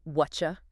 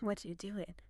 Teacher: The T in what and the Y in you smashed together to create a CH sound.